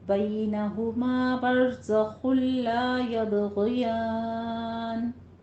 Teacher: زائے کو سیٹی کی آواز کے ساتھ ادا کرنا ہے ، خو کو پر پڑھتے ہوئے ادغام بلا غنہ کرنا ہے، · غین کو پر پڑھیں گے کسرہ کے ساتھ باریک آواز